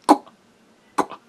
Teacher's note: we're closing our glottis before we release the qua sound. So it comes out as qua, qua.